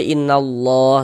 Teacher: Ada lafaz Allah sebelumnya ada tanda baca fathah maka lafaz Allahnya dibaca tebal. Jadi huruf lam jalalahnya itu kita baca tebal nih · Jadi huruf lam jalalahnya itu kita baca tebal nih. Huruf lam lafaz Allah yang di tengah nih kita baca tebal, kita baca tafkhim. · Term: tabkhim